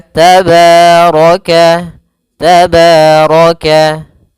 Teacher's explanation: Pada bacaan tabaraka, pada lafal ba di sini ada fathah bertemu alif, maka kita hukumi dengan bacaan yaitu mad tabi'i. Mad tabi'i panjangnya yaitu 2 harakat.